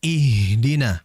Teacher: Ha itu makhrajnya di mana? Tadi disebutkan di tenggorokan bagian paling bawah. Aqsa alhalqi. Maka hati-hati dialirkan dulu.